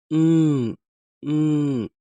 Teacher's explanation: we use our both lips to pronounce this m sound this is called bilabial